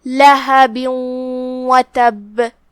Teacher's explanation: ادغام کا معنی ہے حرف کو حرف میں داخل کر دینا، لہذا ہم یہ تنوین کو واو میں داخل کر کے غنہ کے ساتھ اور تشدید کے ساتھ یہ حکم کو ادا کریں گے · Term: ادغام بغنہ